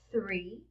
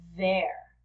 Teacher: one is voiceless three and the other is voiced there there's a vibration